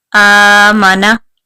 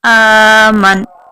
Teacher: آخری جو حرف ہے نون جس کے اوپر زبر ہے اس کو ساکن کر دیں گے